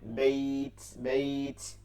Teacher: বাইয়া জবর বাই, তাতে জসম, একই নিয়ম মাদ্দে লিনে এক আলিফ টেনে পড়তে হবে